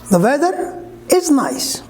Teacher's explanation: Yes, the weather, rising, is nice, falling.